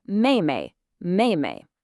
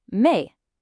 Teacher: we're back to that sharp falling fourth tone again.